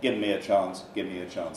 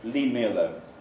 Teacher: you'll find that V is elided before M